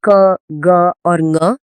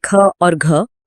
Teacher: अल्प प्राण जिसमें कम हवा निकलती है, और महाप्राण जिसमें अधिक हवा झटके से निकलती है।